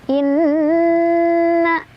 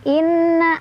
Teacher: Jadi kita baca gunnah aja ya, kita sebut gunnah aja biar simple. Di sana karena ada nun yang bertasydid, cara bacanya didengungkan ya, dengungan itu ditahan sampai kerasa ke hidung, sampai hidung bergetar baru dilepas. Inna, jadi bukan inna, harus lebih sabar.